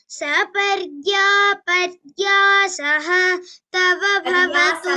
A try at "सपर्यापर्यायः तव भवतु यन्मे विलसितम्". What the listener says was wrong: पर्यासः, it's not पर्यासः, it is पर्यायः. सपर्यापर्यायः तव भवतु यन्मे विलसितम्. सपर्यापर्यायः तव भवतु यन्मे विलसितम्.